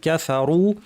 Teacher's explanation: ক্যাফা রু ভারী হবে, র পেশ রু